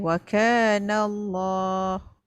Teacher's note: Lam lafzu jalalah dibaca dengan taghlish dan tafkhim.